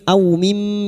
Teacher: Au fathah bertemu wawu sukun kita akan huruf lin. Au mim, mim yang bertasdid gunnah musyaddada kita dengungkan selama 3 harokat.